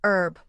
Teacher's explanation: Americans often say herb without the h sound while British speakers pronounce the hb.